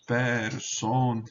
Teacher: Ele está fechada a sílaba, então é longa por posição, ainda que o E seja breve, por natureza, seja breve.